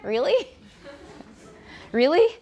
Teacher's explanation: there is almost always some lip rounding so r inherently is rounded